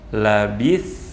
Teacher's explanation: kita sukun kan huruf tsa kita alirkan kita datangkan sifat rokhowah dan lalu kita membaca huruf ta Dalam keadaan Sukun dan kita